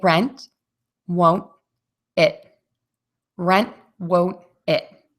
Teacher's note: you're not going to move it for the unreleased t and no air Puffs out of your mouth